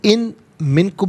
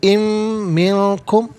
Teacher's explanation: व इन में नून साकिन है, लेकिन इसे मिन की मीम के साथ मिलाकर मीम की आवाज़ को गुन्ने के साथ अदा किया जाएगा। इसे इन मिनकुम नहीं पढ़ेंगे, इम मिनकुम, मिन अलहदा कुम अलहदा मिलाकर पढ़ेंगे।